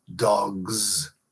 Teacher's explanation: You pluralize dog by adding a voiced S, that is Z